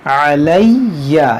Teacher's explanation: یہاں پر آپ دیکھیں، یہاں نون مشدد ہے، اس میں غنہ ہوگا، تمنہا علیہ، یہاں یا مشدد ہے، اس کو دو بار پڑھیں گے اس لفظ کو